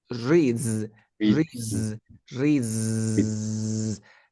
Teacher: ¿Qué es lo que pasa si antes de la S hay un sonido voiced? Que esa S ahora se escucha con una Z. Por ejemplo, tengo read, termina, read, sería reads, read y hago el zzz, reads, read, reads, read, reads, read.